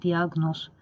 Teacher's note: burda i a iki hərf birləşməsi arasına y samiti əlavə olunur. Yəni bu sözün tələffüzü olur belə diaqnoz şəklində tələffüzü yazaq olur diaqnoz.